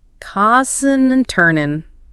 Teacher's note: Some speakers might drop the final G in tossing, making it tossing.